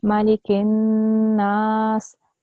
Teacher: after the noon I have a alif mad, so I'm making that long. Again, ila, I've got a vertical fatha on top of the lam, so I'm making it 2 seconds long.